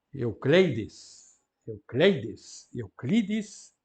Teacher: Aquele I é longo em latim, porque resulta em grego, o ditongo ei